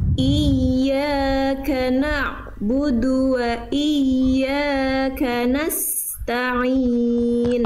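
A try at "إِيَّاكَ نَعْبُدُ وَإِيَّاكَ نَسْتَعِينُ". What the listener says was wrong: Oke, sedikit dialirkan ain sukunnya bunda. Iyyaka na'bu. Nah, ainnya jangan putus. Jangan na'budu. Nah, jangan terhenti. Iyyaka na'budu wa iyyaka nasta'in.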